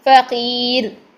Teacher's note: جب ساکن کریں گے تو را ساکن سے پہلے یا ساکن ہے تو اس کو ہم باریک کر دیں گے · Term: را باریک